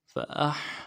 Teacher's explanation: أَمْوَاتًا وَكُنْتُمْ أَمْوَاتًا فَأَحْيَاكُمْ، فَأَحْيَاكُمْ، فا کو نرم سے پڑھیں گے، حمزہ کو حا کے ساتھ ملانا ہے، حا میں آواز زیادہ رہے گی ، فَأَحْ، یا کے بعد الف مدہ ہے، ایک الف مقدار